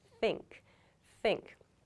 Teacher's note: like you have the feeling of air passing through your mouth there's no vibration in your vocal cords so this is the correct way to make an unvoiced th sound